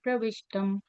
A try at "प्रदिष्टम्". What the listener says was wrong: सो यत् पुण्य फलम प्रदिष्टम। आपने शायद प्रविष्टम शायद बोला आपने। प्रदिष्टम, हाँ जी।